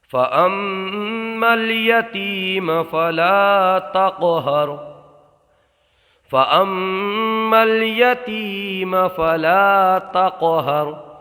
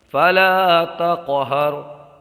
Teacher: क़लक़ला में आवाज़ पलट के आती है